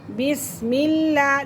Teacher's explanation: بسم اللہ، لفظ اللہ کی لام سے پہلے زیر ہے اسی لیے ہم اسے باریک پڑھیں گے۔